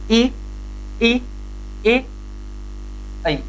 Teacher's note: इनका उच्चारण कर रहे हैं और उच्चारण करने पर मुख कम से कम खुल रहा है। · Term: संवरित स्वर